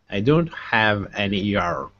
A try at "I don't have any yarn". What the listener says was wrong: Yeah, you can do less R on yarn. Most important, the A is important, but it doesn't have to be yarn so much.